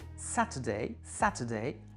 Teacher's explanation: accent sur l'antépénultième, c'est la première